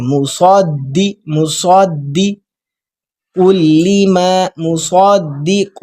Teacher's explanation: صاد کو جب دال کے ساتھ ملا رہے ہوں گے تو کلکلا کریں گے